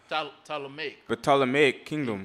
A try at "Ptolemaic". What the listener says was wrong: It's a Greek name. You don't pronounce the P. It's just a straight T.